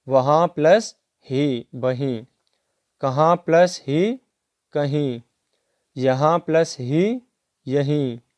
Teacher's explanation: पहले शब्द से आ स्वर का तथा दूसरे शब्द से हा व्यंजन का लोप हो जाना और अनुनासिकता दूसरे स्वर पर पहुंच जाती है।